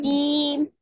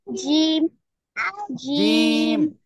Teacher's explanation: জিহ্বার মধ্যখান তার বরাবর উপরের তালুর সঙ্গে লাগিয়ে উচ্চারণ হবে